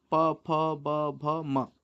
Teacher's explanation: पा वर्ग ओष्ठ से बोला जाता है